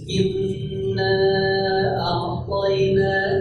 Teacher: Ya, ngomong inna dalam bahasa Arab dengan Al-Quran tidak perlu disamakan. Ya, kalau kita lagi baca Al-Quran, inna a'tayna digunakan masuk rongga hidung. Inna a'tayna gitu. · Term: gunnah